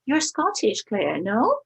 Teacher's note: you may tag with the word no and a rising intonation